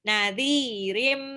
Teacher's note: Nadhirim, tanwin ketemu mim, idgham bil gunnah. Ditahan 2 sampai 3 harokat.